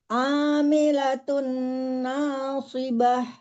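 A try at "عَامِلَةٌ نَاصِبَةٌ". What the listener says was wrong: Nah-nya jangan tebal no. Nah.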